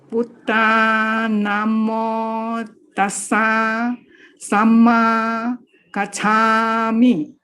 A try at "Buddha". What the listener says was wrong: Yes, Buddha must be short, Buddha, short. Yes, we are learning to use a short A here. So it's Buddha or Buddha, Buddha, but not Buddha, no.